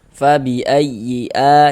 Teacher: Kemudian a dibaca panjang ini namanya adalah mad badal. Ee karena ini yang dibaca panjang ini huruf hamzah.